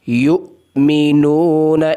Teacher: حمزہ کو جھٹکے کے ساتھ ادا کرنا ہے۔ یؤمنون، اتنا زیادہ جھٹکا نہیں لگانا۔